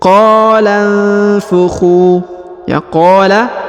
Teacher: huruf qa dipanjangkan 2 harokat karena di depannya terdapat alif.